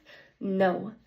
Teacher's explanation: place articulation is the ridge behind your top teeth